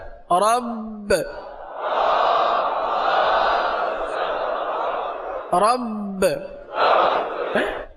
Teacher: را با زبر رب، رب، قلقلہ بھی ہوا ہے، جماؤ پہلے ہوا ہے پھر قلقلہ ہوا ہے، جماؤ کریں گے تو قلقلہ ہوگا۔